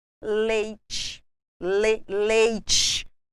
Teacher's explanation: Ocorrendo vogal mais semivogal, ditongo decrescente. Exemplos: leite, ou é com som de é.